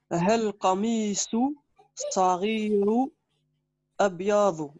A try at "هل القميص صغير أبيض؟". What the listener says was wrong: regarde bien, tu as un i. هل, voilà. Parce que tu dois faire la liaison. هل القميص.